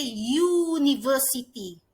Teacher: the U in university sounds like there is a Y in front of it. Kerana university bunyinya macam ada Y depannya.